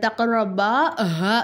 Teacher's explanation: தக்ரபா ஹாதிஹி ஷஜரத்தை தக்ரபா ஹா அந்த ஹாவை என்ன செய்யணும்? ஒரு அலிஃபுக்கு நம்ம நீட்டணும். ஏன்னா வந்து கடா ஜபர் இருக்குது.